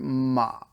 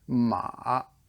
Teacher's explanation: third tone it's a dipping tone, so it goes like this, ma, or this, I'm not sure which way.